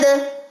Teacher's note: अब इसको पढ़ते हुए देखिए सांस तो नहीं जारी हो रहा। अद, हथेली पे सांस तो नहीं लग रहा, नहीं लग रहा, क्योंकि इसमें सिफ्ते हम्स नहीं है, इसमें सिफ्ते जहर है, यानी कि आपकी सांस बंद होगी, आपकी आवाज बंद होगी, और इसमें कलकला भी है। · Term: शिद्दत और कलकला